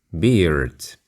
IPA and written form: bɪərd (beard)